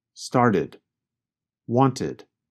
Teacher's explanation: With the first examples, the verbs started and wanted, you can hear the extra syllable id.